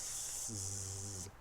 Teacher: You make a S sound, zzz. You put a voice behind an S sound, you've got a Z. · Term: a phonated S